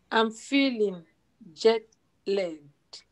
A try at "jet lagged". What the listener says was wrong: It's right now I'm hearing legged, like a leg next to your arm and your leg. So I'm hearing L-E-G-G-E-D. So lagged is a nice black vowel when we come down to the chart.